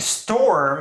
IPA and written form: stʰoɹm (storm)